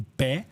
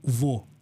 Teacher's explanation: uma é sílaba aberta que é tipo pé e outra sílaba fechada que é tipo vô